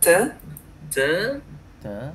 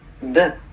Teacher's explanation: On ne sent pas une vibration avec te. Mais de, c'est assez dur, assez lourd, on sent une vibration.